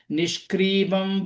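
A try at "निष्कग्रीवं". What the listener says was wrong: So second, Nishka on the word. Ka sound, I think you missed it. Nishka Grivam.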